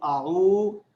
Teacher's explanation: جب میں نے زبان دانتوں میں پکڑی تو خود بخود وہ ذال ادا ہو گیا